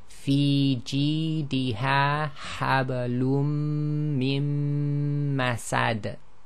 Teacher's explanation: we stop and there's a qalqala on that last dal